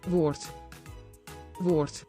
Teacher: When the D is on the end of the word, it is often pronounced as T, like word, which means word.